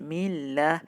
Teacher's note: mim kasrah ketemu lafzul jalalah Allah, maka lamnya dibaca dengan tipis